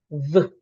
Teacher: Say for example, if I say the V sound, the sound of letter V, VV, I should feel vibration on my vocal cord, that makes the V sound a voiced sound.